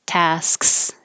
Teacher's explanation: while i'm making my s my tongue goes up for my k tasks and just quickly makes a tasks and interrupts the s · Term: sks combination